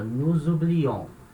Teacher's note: Segunda pessoa, terminação on, fica nous oublions. Aí sim, a última sílaba é uma sílaba forte, então ela é a sílaba tônica